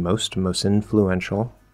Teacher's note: at the end the t can usually drop